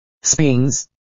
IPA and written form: spɪnz (spins)